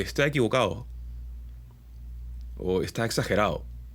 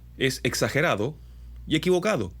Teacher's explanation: solemos tener consonantes como la D, muy débiles a la hora de hablar, sobre todo la gente de la costa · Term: consonantes débiles